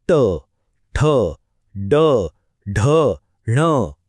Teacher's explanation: टोकाची हालचाल लक्षात आली ना आता येतो एक खास गट मूर्धन्य इथे काय होतं तर जीभ अशी मागे वळते आणि टाळूच्या वरच्या भागाला लागते